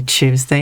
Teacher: saying tu is a bit tricky, so you simplify it to chew